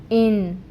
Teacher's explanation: اب اس نون ساکن کو ہم نے ناک میں چھپانا ہے، اس کی آواز کو، اور وہ آدھی آواز ہوگی۔ اس آدھی آواز کو کہتے ہیں اخفا کرنا، اور اس کی مقدار ہوتی ہے 2 کاؤنٹس کے برابر۔